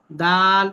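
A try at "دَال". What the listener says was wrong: দাল, দাল যে লম্বা করে টান দিচ্ছেন সেটা টান না দিলেও চলবে। দাল আলিফ দুই জবর দান। লম্বা করে টান না দিলেও চলবে, জি।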